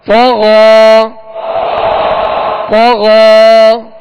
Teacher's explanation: یہ یا اس میں پڑھی نہیں جائے گی بلکہ غین کے اوپر جو کھڑا زبر ہے یہ الف مدہ کے قائم مقام ہے. لہذا یہاں غین کے اوپر کھڑا زبر پڑھیں گے اور ایک الف کی مقدار کھینچ کر ادا کریں گے